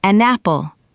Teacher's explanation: a native speaker will naturally link the consonant N to the vowel A and say an apple. It becomes one smooth sound. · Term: linking, connected speech